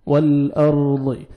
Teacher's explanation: واو کو لام کے ساتھ ملائیں گے، لام کو آپ نے ہلانا نہیں ہے